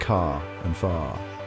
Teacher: One of the most noticeable differences is the pronunciation of the letter R. In standard American English, the R is pronounced clearly at the end of words like car and far.